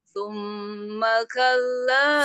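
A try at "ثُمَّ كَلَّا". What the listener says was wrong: Mim tasdid. Sama dengan amma.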